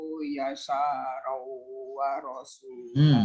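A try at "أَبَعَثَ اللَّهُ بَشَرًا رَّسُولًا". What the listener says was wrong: Gak ada wawunya. Basyarar rasula.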